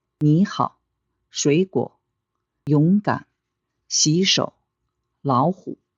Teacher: Remember, the first third tone rises. The second one stays low and short. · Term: Third tone plus third tone